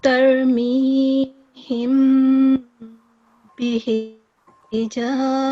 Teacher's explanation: So as I could hear, you pronounced the meme for 2 seconds. You gave it a 2-second nasal sound. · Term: meme ikhfa